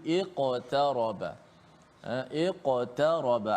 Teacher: ada qaf mati di tengah-tengah kalimah ataupun ayat ini, maka dibaca dengan qalqalah yang sughra, yang paling martabat yang paling rendah sekali.